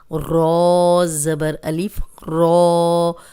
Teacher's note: ذال زبر الف ذا، رو زبر الف رو. اب رو پہ زبر ہے تو رو موٹی پڑی جائے گی اور لمبا بھی کریں گے